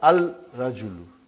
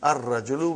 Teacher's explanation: We won't pronounce lam. Why? Because it is a sun letter.